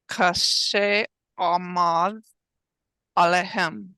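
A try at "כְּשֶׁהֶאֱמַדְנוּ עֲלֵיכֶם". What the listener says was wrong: Beautiful. Yafe. Right.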